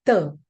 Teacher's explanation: They don't have the dental sound. Ta is a typical Indian sound. I mean, ta, uh, which is a dental sound